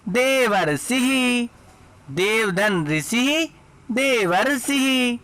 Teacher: आ के बाद री आने पर दोनों को मिलाने पर अर हो जाता है।